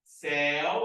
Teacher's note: Céu é um ditongo aberto.